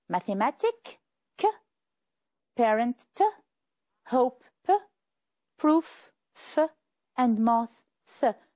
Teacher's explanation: the final S is pronounced s after the sounds k, t, p, f, and th